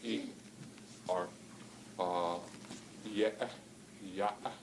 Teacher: we can close the glottis and make what's called a glottal stop